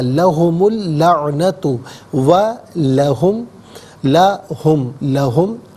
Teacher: یہ اصل میں لی ہے، ہم کے ساتھ استعمال ہوا، لا پڑھا گیا، ملا کر پڑھیں گے لہم۔ ملا کر پڑھنے کی صورت میں لہم میں میم پر پیش ہوگا، اس سے اللعنۃ کی لام کے ساتھ ملائیں گے، اور درمیان میں سے الف یعنی حمزہ کو حذف کیا جائے گا